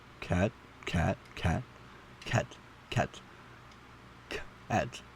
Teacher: It's why we know that cat and bat are different words, but pronouncing cat with a little extra puff of air on the C, cat, cat, cat, cat, cat, cat, doesn't change its meaning.